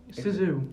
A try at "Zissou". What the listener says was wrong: No, it's Z. No, the flag had ZZZ